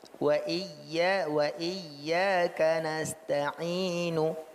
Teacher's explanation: Jadi nunya tidak penuh satu harakat, tapi dia hanya sebagian harakat. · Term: rom